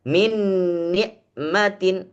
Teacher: tempelkan Nun dengan Nun maka seperti jadi satu ya Min nikmatin udah jadi nya satu tempel sudah jadi meang